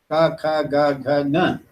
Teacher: So according to the place of production, the word they use is articulation. According to place of production, they are all produced in the throat.